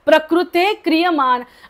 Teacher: तो जो विसर्ग आहे पुढे क असल्यामुळे अर्धा बोलायचा आहे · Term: अर्धा विसर्ग